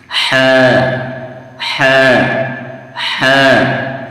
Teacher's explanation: حلق کا بیچ والا حصہ، یعنی جو حلق ہے اس کے بیچ سے یہ ح نکلتا ہے